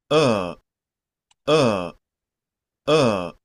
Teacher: el schwa, la lengua está en estado de reposo. No se mueve. La tenemos quietecita y solo literalmente pujamos.